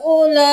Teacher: ہاں کو ہم نے 4 الف کے برابر کھینچا کیونکہ یہ 3 الف کے برابر چھوٹی مت کھینچی جاتی ہے